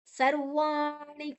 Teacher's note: ನಿ ನಾಲಿಗೆಯನ್ನ ಮಡಚಿ ಹೇಳಬೇಕು